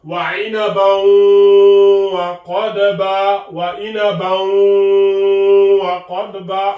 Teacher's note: Donc, lorsque le tanwin bil fatha est suivi par la lettre waw, le waw faisant partie des lettres du idgham avec la ghunna.